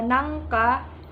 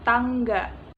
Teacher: bunyi eng, K, dan G sama-sama bunyi velar